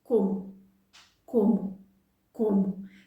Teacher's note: O's at the end of words in Portuguese will sound like a U